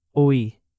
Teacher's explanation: Oí has two clear vowel sounds, o i. Don't crush it into one syllable. Let it breathe a little.